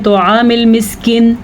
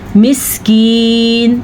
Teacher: और यहाँ पे या मद्दा है, यानी कि या साकिन हो, उससे पहले हर्फ नीचे ज़ेर हो तो वो या मद्दा होती है, उसे खींच के पढ़ते हैं। बाज़ लोग इसको पढ़ते हैं तआमिल मिस्किन, मिस्कीन ऐसे पढ़ना है।